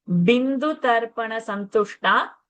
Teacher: Shakara in the Santushta should be Murdani. The tongue should touch the roof of the palate.